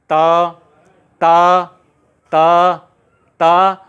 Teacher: जहां पर ता बोलते वक्त आपकी जीभ स्पर्श कर रही है स्थान को, उस स्थान का नाम है दंत